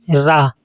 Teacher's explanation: अगला नंबर है लुंठित। इसके उच्चारण में जिह्वा वत्सर्य भाग की ओर उठती है। इसमें रा, ये रा वर्ण है।